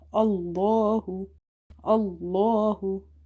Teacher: before the letter lam in the word Allah you have fatha, so you will make this lam heavy